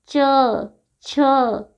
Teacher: च, छ, जीभ देखिए तालु के पास जा रही है